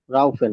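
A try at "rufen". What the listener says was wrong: রুফেন, নট রাউফেন। ইউ এর উচ্চারণ কি? ইয়া, উ এর মতো।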